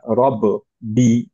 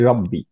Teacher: যেমন হচ্ছে রব্বি বলতে গেলে আমরা রব বি এরকম বলি না, রাইট? আমরা বলি রব্বি, কলকলাটা বাদ চলে যায়।